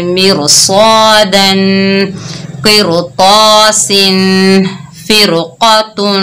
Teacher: ठीक है, पहली शर्त कौन सी है, रा साकिन हो और उससे पहले जेर हो। तो रा को बारीक पढ़ने की बजाय मोटा पढ़ेंगे, क्योंकि आगे हरूफ इस्ताला में से मोटा हरूफ आया, तो हमने रा को मोटा पढ़ा।